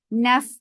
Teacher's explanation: Naf for fatha open jaws attach with fa. Fa will get sifa of hams, and hams is flow of breath.